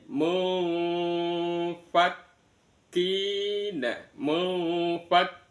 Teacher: Maka bunyi nunnya itu disamarkan antara nun sama fa. Mum bukan mum ee cuma ada kedengaran seperti bunyi mim mu.